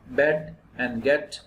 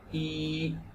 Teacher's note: the jaw is approximately half open so you can feel it the sound is pretty pronounced in the front of the mouth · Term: front wall